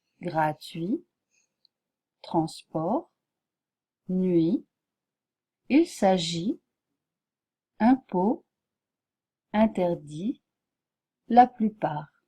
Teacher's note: vous voyez que le T ne se prononce jamais